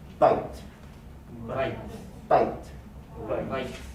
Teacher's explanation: It's not separate. It's one movement from I, as in the word bite. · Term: diphthong